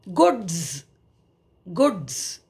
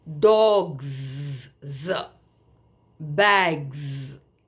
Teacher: you're adding the plural morpheme s but you are pronouncing it as Z